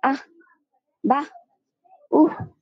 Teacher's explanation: থাকলে উচ্চারণ >> অবতীম শান্তি অর্থাৎ হর উচ্চারণটা আটক করার পরে বিসর্গার উচ্চারণটা হবে ওই অর্ধ হওর মত যে আমরা বাংলায় বলি না বেধে বলি আহ বাহ উহ এরকম